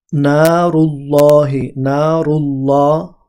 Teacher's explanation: এই আল্লাহ এই শব্দটা মুখ ভর্তি করে উচ্চারণ করতে হয় কিন্তু যদি জের থাকে তখন কিন্তু মুখ ভর্তি করে উচ্চারণ করা